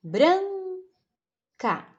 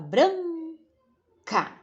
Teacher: então o bran é a tônica